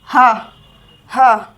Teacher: हवा एकदम झटके से बाहर आ रही है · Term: काकल्य व्यंजन